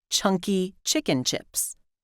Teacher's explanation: like ptk they're aspirated at the beginning of words or stressed syllables